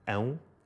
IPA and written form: ɐ̃w̃ (ão)